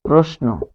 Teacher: তালব্যস্য এর সাথে যদি দন্ত ন বসে তখন তালব্যস্য হয়ে যাবে দন্তস্ব